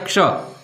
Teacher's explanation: તો હવે આનું સ્થાન કોઈ પૂછે કે આની જગ્યા કઈ, તો કે કંઠ અને મૂર્ધા, તો કે મૂર્ધન, કંઠ મૂર્ધન્ય આવું થાય. કંઠ અને મૂર્ધન્ય બંને ભેગું થઈ અને ક્ષ બને છે